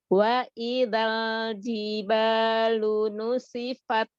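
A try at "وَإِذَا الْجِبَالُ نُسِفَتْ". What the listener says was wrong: Zalnya sempurnakan fathahnya, buka. Zal ya. Selesaikan dulu harokat fathahnya baru ke lam sukun. Jadi latih lagi al-jaufnya ya, dari rongga mulut harokat-harokatnya itu keluarnya itu samain, udah itu keluar aja ya.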